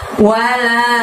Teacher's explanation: wa-nya pendek, la-nya panjangnya 5